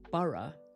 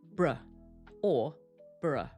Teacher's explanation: because it's at the end of the name, it's not stressed, so we pronounce it in a much weaker way. We use a schwa. So instead of bur, it sounds like br or burr.